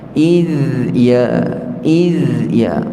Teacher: Jadi sebenarnya za itu bukan qalqalah, mati kan dia, dan dia ada sifat rakhawah, yakni kena beri tempoh dulu, kemudian pindah pada ya